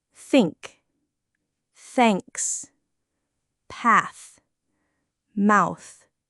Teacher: And then you have two options, the unvoiced th and the voiced th. For the unvoiced th like in think, you push air out without using your vocal cords. It's just air.